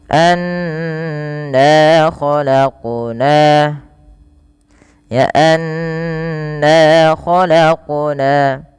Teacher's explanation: dan bunyi suara nunnya ditahan. Tidak hanya sekedar anna tapi di ditahan.